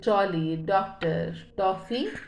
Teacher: इसका उच्चारण आ और ओ के मध्य का प्रतीत होता है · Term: आगत ध्वनि